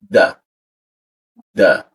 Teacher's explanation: Da ujung lidah tempelkan ke belakang di bagian atas · Nah, z, posisinya di tengah lidah hurufnya dia, z, nah perkataan di sini, lalu masuk ke da, ujung lidah tempelkan ke belakang gigi bagian atasnya